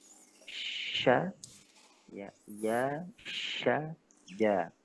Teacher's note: Kalau iya, itu naik di lidahnya sedikit. Ya. Kalau shin, naikin lagi hampir tertutup. Kalau jim, tertutup. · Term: di tengah lidah